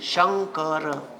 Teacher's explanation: आता लक्ष द्या अनुस्वाराच्या पुढे कठोर किंवा मृदू व्यंजन आलं त अनुस्वाराचा उच्चार त्याच्याच लाईनीतल्या अनुनासिका सारखा करावा